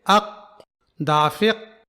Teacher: جب ہم قلقلہ نہیں کرتے ہیں تو حرف قاف کی آواز سختی سے بند ہو جاتی ہے، جیسے اق، دافق۔